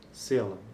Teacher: uma vogal média baixa anterior, não arredondada, que é seguida por um segmento alveolar, dental, lateral · O símbolo S, por exemplo, corresponde a uma fricativa alveolar desvozeado, que é o segmento consonantal articulado no início da palavra.